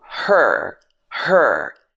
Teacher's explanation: the R sounds in American English are a lot more pronounced